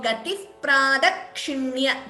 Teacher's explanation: Again, visarga followed by pa would be upadhmaniya.